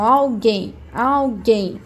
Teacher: A minha sílaba tônica vai ser a última